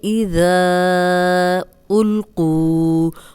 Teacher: تو اب دیکھیں، زال کو ہم نرم پڑھیں گے، سیٹی کی آواز نہیں آئے گی، اوپر سامنے کے جو 2 دانت ہیں ان کے اندرونی کنارے پہ زبان رکھ کے ادا کریں، اور ذا کے آگے حمزہ آ گیا ہے تو ہم اس کو 4 حرکات لمبا کریں گے